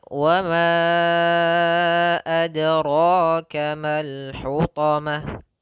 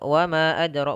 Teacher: Apabila ada mad tabi'i atau mad yang 2 harakat bertemu dengan hamzah di lain kata disebut dengan mad jaiz. Mad jaiz setidaknya kita panjangkan, sahabat sekalian, itu 4 harakat. Ya, maka kita bacanya wa ma adraka mal hutamah.